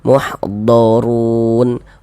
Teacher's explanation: huruf rnya dibaca tebal dibaca tabkhim. E sehingganya pangkalisan pangkal lisan kita naik terangkat ke atas.